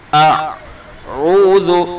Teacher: حمزہ کو حلق کے آخری سینے کی طرف سے ادا کرنا ہے، سینے کی طرف سے، اور عین کو حلق کے بیچ سے ادا کرنا ہے، دونوں کے اندر فرق ہو گیا۔